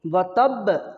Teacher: جب با مشدد ہے تو اس کے اندر آواز کو ہم سختی سے ادا کریں گے